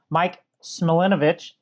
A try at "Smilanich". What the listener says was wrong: You put an extra syllable in there, but it's Smilanich. They're very close, though.